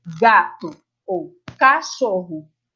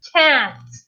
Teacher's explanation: Eu tenho vogais mais abertas. A minha articulação é mais aberta, portanto, eu tenho um som mais cheio.